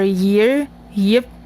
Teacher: it is articulated with audible friction when before only the vowels e or I. So, it's like the sound w, but it's assimilating more with the sounds e and I and none other vowels. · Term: y sound